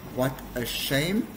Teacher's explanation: So my voice goes up when I say the word shame. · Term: intonation